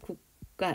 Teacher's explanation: 파열음 뒤에 된 소리가 나는 거야